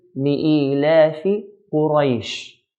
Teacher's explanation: we have to say the fatha properly, clearly. Ra fatha ra, and not in between fatha and kasra